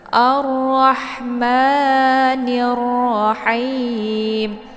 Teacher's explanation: ada sedikit suara yang mendesah ataupun ada desis angin ya. Jangan rahma ya, karena ini ha kecil, sifatnya juga hamas.